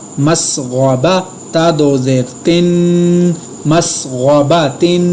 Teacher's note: میم زبر سین مس، غین زبر غا، مسغا، با زبر با، مسغبا، تا دو زیر تن، مسغباتن۔ غین کو میں نے پر ادا کیا، تنوین پر میں نے غنہ کیا